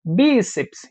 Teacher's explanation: A mais forte é a penúltima. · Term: paroxítona